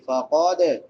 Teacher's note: ہے، ایک کے برابر لمبا کریں گے، فقد، قاف موٹا ہوگا، دال کے اوپر قلقلہ کریں گے، دال حروف قلقلہ میں سے ہے یعنی اسے ہلا کے پڑھیں گے